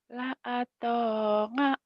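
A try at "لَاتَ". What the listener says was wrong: atau ngak, jangan ngak, tapi a.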